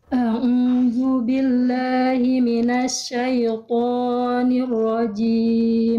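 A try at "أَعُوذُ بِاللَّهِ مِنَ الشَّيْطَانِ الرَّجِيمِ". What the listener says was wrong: Tinggal toknya jangan kepanjangan Bunda. 2 harokat. A'udzu billahi minasyaitonir rajim.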